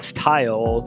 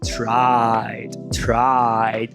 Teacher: um ditongo crescente com início na vogal baixa central não arredondada e faz o glide escorrega pra vogal alta anterior não arredondada.